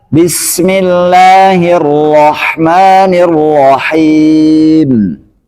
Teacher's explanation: tapi bacanya dengan satu kali getaran saja